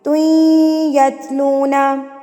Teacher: تو یہاں پہ ہم ادغام کریں گے, توئیں ادغام مع الغنہ یعنی کہ گنہ کے ساتھ ملائیں گے. توئیں ناک میں آواز چلی جائے گی